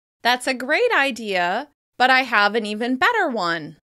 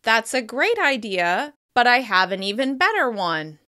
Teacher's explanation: As you can hear, I'm contrasting great and better with my voice.